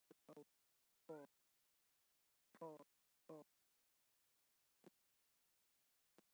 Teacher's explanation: प वर्ग का उच्चारण दोनों होठों से होता है